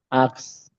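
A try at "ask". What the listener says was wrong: হ্যাঁ, আপনার ক স্বর আ এর পরে ক চলে আসতেছে। আস্ক, আক্স। একটু খেয়াল করেন, এখানে একটা হচ্ছে আপনি যেটা বলতেছেন আক্স, উচ্চারণটা প্রনাউন্সিয়েশনটা হবে আস্ক। আস্ক ক পরে, ক পরে যাবে আস্ক। আস্ক।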